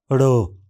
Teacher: इस ध्वनि के उच्चारण में स्वर यंत्र कंपन करता है। जीभ का सिरा पीछे की ओर मुड़कर कठोर तालु को छूता है। फिर जीभ हटने पर हवा विस्फोट के साथ बाहर निकलती है।